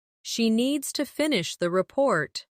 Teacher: "She needs to finish the report." Stress needs and report. And let the small words fall quietly.